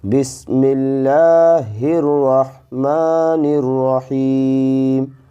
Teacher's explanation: مثال کے طور پر بسم اللہ الرحمن الرحیم، اس میں ہم نے با کو سین سے ملا کر پڑھا، میم کو لام سے ملا کر پڑھا کیونکہ اس پر تشدید والی علامت ہے، پھر ہا کو ہم نے را سے ملا کر پڑھا کیونکہ اس پر بھی تشدید والی علامت ہے، یعنی را پر تشدید والی علامت ہے، پھر ہا کو ہم نے را سے ملا کر پڑھا کیونکہ ہا پر جزم والی علامت ہے۔ · لام پر کھڑا زبر ہے تو اس کو ایک الف کھینچیں گے، یعنی 2 حرکات کے برابر اس کو کھینچیں گے